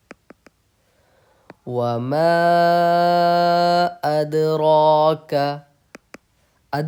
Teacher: अदर का अद पर आपको कलकल करना है